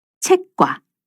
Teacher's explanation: 아음절의 받침 그드부 뒤에서 뒤에 예사 소리가 된 소리로 나는 경우예요. 책의 끝소리와 뒤에 그가 만나서 꽈로 소리나죠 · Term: 경음화